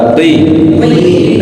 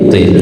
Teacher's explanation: walaupun kasrah dia baca tebal